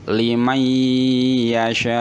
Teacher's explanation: nun sukun bertemu dengan huruf ya, maka suara nunnya itu hilang, berubah menjadi seakan-akan ya-nya ini double atau tasdid. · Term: idgham bi gunah